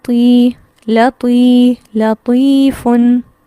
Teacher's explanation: طی یہ لمبا کر رہی ہوں، نہ میں لام زبر لا کو لمبا کر رہی ہوں نہ فا کی تنوین کو. فن اس کو سمپل پڑھ رہی ہوں، لام زبر لا پڑھ رہی ہوں.